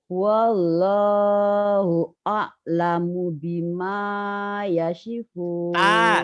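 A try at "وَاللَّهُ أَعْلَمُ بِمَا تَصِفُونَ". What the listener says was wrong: Tasipun bukan Yasipun. Ibu tadi bacanya Yasipun.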